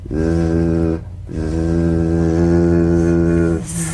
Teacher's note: The tip in gentle contact with the hard palate. Z, z. The Z vibrates in that very small open space between the tongue and the upper teeth.